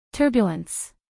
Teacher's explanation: acentuación en la primera sílaba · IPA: ˈtɜrbjələns